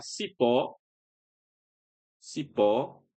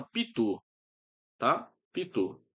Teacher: Ambas as palavras a sílaba tônica é a última